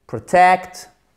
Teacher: c'est la prononciation des voyelles non accentuées comme un E atténué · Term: schwa